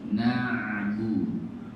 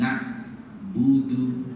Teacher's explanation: Ain mati suaranya tidak putus.